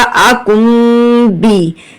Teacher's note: اقلاب کا مطلب ہے بدلنا، بدلنا کس کو ہے، نون کو میم میں بدل دینا ہے، ٹھیک ہے، ہم میم پڑھیں گے، نون کو نہیں پڑھیں گے، یہی اقلاب کا رول ہے۔